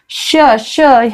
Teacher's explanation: श श हा जो श आहे षटकोनातला थोडीशी जीभ वाकडी होते मूर्धन्य आहे तो